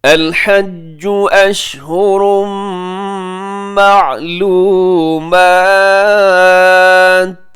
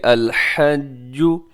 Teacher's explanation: جیم کے اوپر تشدید ہے تو وہ ذرا آپ نے رک کر مضبوطی کے ساتھ آپ نے اس کو ادا کرنا ہے